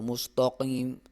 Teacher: طا، صاد اور قاف کو، اہدنا الصراط المستقیم، تا کو مستقیم، تا کو موٹا نہیں پڑھنا، صرف طا کو موٹا پڑھا جاتا ہے